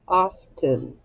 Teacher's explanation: this E doesn't actually sound like an E. It sounds like an I.